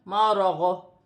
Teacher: وقف کی صورت میں دو پیش کی تنوین گر جائے گی اور غاد ساکن ہو جائے گی اور غاد کی ہلکی سی آواز آئے گی